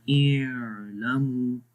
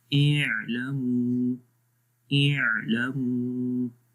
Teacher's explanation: تو عین کی آواز کو تھوڑا سا ریلیز کرنا ہے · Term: درمیانی آواز